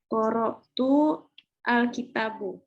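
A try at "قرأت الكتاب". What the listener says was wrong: Boleh. Sahih, ahsanti.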